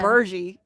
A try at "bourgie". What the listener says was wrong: She's like, no, I'm holding on to my R.